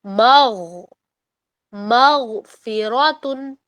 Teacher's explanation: تو مغفراتن میں غو پر آپ نے حلق میں اس کو ہولڈ کرنا ہے, مغ نہیں بولنا آپ نے, مغ نہیں بولنا, مغ مغفراتن.